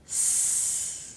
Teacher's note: that sound is voiceless. I can make that sound with only air. S. My throat is not vibrating from the vibrations in my vocal cords.